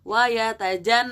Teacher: ada ghunnah Jadi kalian tahan dua harokat minimal